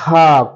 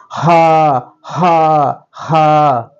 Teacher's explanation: এটি হলো হা কণ্ঠনালী থেকে আসবে